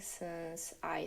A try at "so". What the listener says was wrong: And then also on that vowel on so, I'm hearing so. I'm hearing so. So two things there. I'm hearing a monophthong, so I'm hearing one vowel sound, this but in American English, we want a diphthong, so two vowel sounds. We want o, so, so instead of so. So we want so.